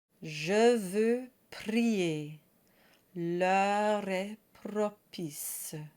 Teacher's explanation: the R's are lightly rolled on the tip of the tongue